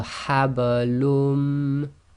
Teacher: Okay, so habalum. So the haba is just nice and very soft because it's in the middle of a word.